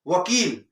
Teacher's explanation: वकारस्य दंतोष्ठम, दांत और ओठ से